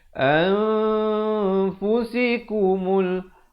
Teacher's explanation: Ini nun mati bertemu fa, ikhfa hakiki. Cara bacaannya disembunyikan bunyi nun di belakang fa kadar 2 harakat.